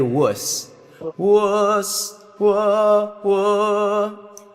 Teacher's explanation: the lips are closer to oo, but the tongue is going like wuh